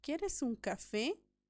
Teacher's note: la palabra café tiene sílaba tónica o acento en la E o acento en la última sílaba, elevación de voz en la última sílaba y por lo tanto es una palabra aguda.